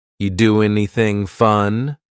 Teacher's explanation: We link together doing because we're going to drop the g. It ends with the sound n, the n sound. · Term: dropping that G